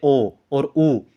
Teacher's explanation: तो वृत्त मुखी का मतलब होता है जब हम बोलते हैं जैसे ओ और ऊ, तो एक मुंह की आकृति जो है एक वृत्त की तरह हो जाती है, गोल हो जाती है